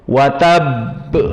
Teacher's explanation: Adapun yang qalqalah kubra, maka di akhir kalimat dan kita wakafkan dan dia musyaddadah.